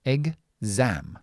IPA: egzaem